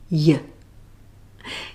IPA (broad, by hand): j